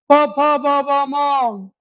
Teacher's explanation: ओष्ट वर्णात एक शेवटच राहिले शेवटचे राहिले ते नावाच्या घरात टाकले या वर्णाचा उच्चार करताना फक्त होठ हलतात